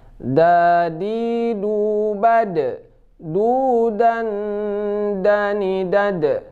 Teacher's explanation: Yang pasti da ini huruf jahar, tidak keluar angin